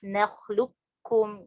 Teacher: itu bacanya diidgham kamilkan, jadi nggak disisain isti'lanya. Alam nakhluqkum, langsung ke kaf, nakhluqkum gitu.